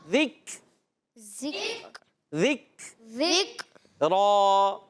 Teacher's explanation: ذک اور ذک یہ شدیدہ محموسہ حرف ہے